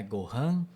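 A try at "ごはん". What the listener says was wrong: Isso.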